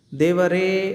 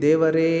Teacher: ಎ ಸ್ವರವನ್ನ ನಾವು ಎರಡು ಮಾತ ಕಾಲಕ್ಕಿಂತಲೂ ಹೆಚ್ಚಿನ ಅವಧಿಯನ್ನ ತೆಗೆದುಕೊಳ್ಳತೀವಿ ದೇವರೇ ಗಮನಿಸಿ ಎರಡಕ್ಕಿಂತಲೂ ಹೆಚ್ಚಿನ ಅವಧಿಯನ್ನ ಅಂದ್ರೆ ಮೂರು ಮಾತ್ರ ಕಾಲದಲ್ಲಿ ನಾವು ಹೇಳೋದ್ರಿಂದ ಇವುಗಳನ್ನ ನಾವು ಪ್ಲುತಸ್ವರ ಅಂತಹೇಳಿ ಕರೀತೀವಿ